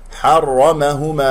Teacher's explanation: الحاء مرققة جاورت الراء المفخم لين مفتوح، فتقول حرمهما خطأ، حرمهما على الكافرين، الكافرين خطأ، الكافرين